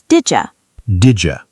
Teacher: the D and Y sounds combine.